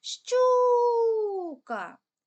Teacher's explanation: звук у нас протягується найдовше Він стоїть в першому складі тому перший склад є наголошеним